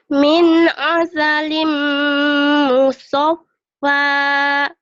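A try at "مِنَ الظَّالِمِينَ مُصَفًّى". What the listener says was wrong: min asalim musaffa. Gitu lagunya ya, latih. Jadi kalau tinggi, kau yang bikin jelek suaramu itu baru mau tinggi langsung turun, itu jadi sumbang. Harusnya min asalim musaffa.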